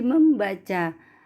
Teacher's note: Misalnya dalam proses pengimbuhan prefiksme pada kata dasar baca akan muncul bunyi sengau M yang semula tidak ada. Contoh, prefiksme ditambah kata baca akan menjadi membaca.